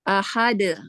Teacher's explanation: Dalnya dibaca mantul, kolkolah.